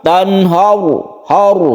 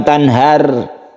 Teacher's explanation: ro yang disukun yang sebelumnya fathah ini kita baca tebal. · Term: tafkhim